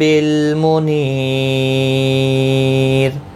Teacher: وقف کی صورت میں وقف بالاسکان ہوگا، مد العارض وقفی ہوگا، 3 سے 5 الف کی مقدار کے برابر کھینچ کر اور وقف کریں گے، اور را ساکن باریک پڑھا جائے گا وقف کی صورت میں۔ را ساکن سے پہلے جب بھی یا ساکن ہوتا ہے تو را ساکن ہمیشہ باریک پڑھا جاتا ہے۔